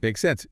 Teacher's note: with a rising intonation at the end